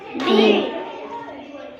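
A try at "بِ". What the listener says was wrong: বি এরকম লম্বা করা যাবে না, কারণ জের, জের হচ্ছে হরকত। এক জবর এক জের এক পেশকে কি বলে? হরকতের উচ্চারণ জোরে বলো, হরকতের উচ্চারণ এই জন্য বান নিচে, যেহেতু এক জের হরকত, হরকতের উচ্চারণ অর্থাৎ তার উচ্চারণটা তাড়াতাড়ি করতে হবে।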